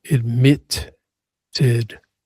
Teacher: Stress is on the second syllable.